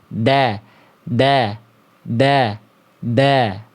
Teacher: Kalau huruf dal itu di ujung lidah